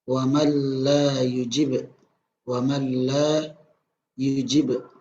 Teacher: ada petot pada kata uang alay ujib Walmart gila yujib dimana huruf nun mati tersebut tidak dibaca melainkan langsung melebur ke huruf lam namun tanpa disertai dengan gunnah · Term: idgham bilagunnah